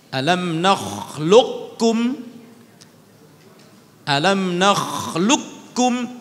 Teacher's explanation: Alam nakhluqkum, ada dua wajah di situ. Qaf ketika bertemu dengan huruf kaf dibaca idgham.